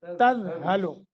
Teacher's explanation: ذال ہے، ذال، زا نہیں کرنا